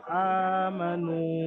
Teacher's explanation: হামজাকে এক আলিফ পরিমাণ আলিফ মাদ্দার মত টান দিয়ে পড়তে হবে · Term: খারা জবার